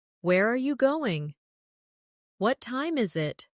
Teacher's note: for information questions, those starting with who, what, when, where, why, how, the tone often falls at the end. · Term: falling tone